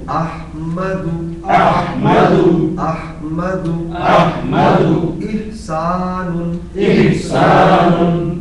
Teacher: یہ ہا حلق سے آنی چاہیے